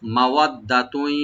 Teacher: ওয়াবাইনাহু মাওয়াদ্দাতুই, মা ওপেন রাখবেন, ওয়া ওপেন থাকবে, দালটাকে ডাবল করে পড়তে হবে, টান হবে না। আর তার উপর যে তানবিন আছে, তানবিন উপর যেহেতু ইয়া আসছে এখানে এদগাম উইথ গুন্না হবে, গুন্না সহকারে আমরা সংযোগ করব।